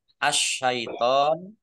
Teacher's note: Shin berat ya. Shin ditandai shinnya ada tasdidnya. Shinnya dibaca double.